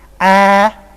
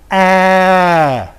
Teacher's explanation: let's first of all produce cardinal 4, and then I will round my lips. Number 4 is A, and A with rounded lips.